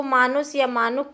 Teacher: कुछ शब्दों में स्वरों का दीर्घीकरण, जैसे मनुष्य को मानुष या मानुक कहा गया